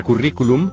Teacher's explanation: La palabra currículum lleva la mayor fuerza de voz en la antepenúltima sílaba, y según el cuadro, sí se tilda.